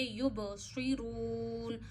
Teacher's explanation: صاد موٹا پڑھیے، حروف مستعلیہ میں سے ہے، مستعلیہ وہ حروف ہوتے ہیں جو ہمیشہ موٹے پڑھتے ہیں.